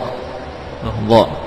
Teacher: Ujung lidah dengan ujung gigi seri, seperti huruf dzal dan fa, ya. Bedanya pada dha ada sifat tafkhim, sifat isti'la. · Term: huruf dha